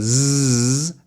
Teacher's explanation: So zzz is still a consonant, it's buzzing, and you can feel it buzzing in your throat, but it's not an open vowel sound